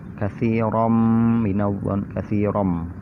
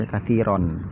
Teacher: Jadi cara bacanya dimasukkan, ya, idgham itu dimasukkan. Jadi bacaan tanwin itu dimasukkan ke mim.